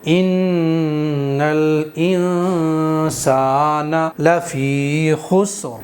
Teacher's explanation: نون کو اب ہم ناک کے بانسے سے ادا کریں گے اخفا کے اندر نون کو · زبان کی نوک مسوڑوں پر نہیں لگائیں گے، ایک الف کے برابر غنہ کریں گے